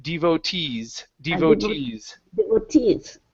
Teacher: the stress is at the very end